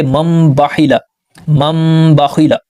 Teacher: نون ساکن کی جگہ ہم نے میم کو پڑھنا ہے، تو پیچھے والے حرف کو ہم نے میم سے ملانا ہے نہ کہ نون سے، یہ تو سمپل ہے اور آسانی سے سمجھ آتا ہے۔ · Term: اقلاب